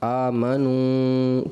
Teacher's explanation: آپ ناک میں آواز لے گئے